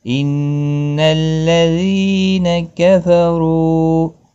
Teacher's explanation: ان نون مشدد پر غنہ ہوگا